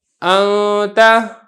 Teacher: اب درمیان میں کیسے پڑھنا ہے، جیسے یہ دیکھیں انتا، اس کو آپ نے یہ بھی نہیں پڑھنا انتا، یہ پڑھیں گے تو اظہار ہو جائے گا، اور یہاں پر ادغام تو ہو ہی نہیں سکتا کیونکہ آگے تا ہے، وہ ادغام والا حرف ہی نہیں ہے۔ تو نون کو پڑھنا تو ہے، غنہ بھی کرنا ہے، ساتھ ساتھ اس کو چھپا کر پڑھنا ہے، پتہ نہ چلے، صاف واضح بھی نہ ہو اور بالکل چھپ بھی نہ جائے، جو درمیانی کیفیت ہے اس کو کہا جاتا ہے اخفا۔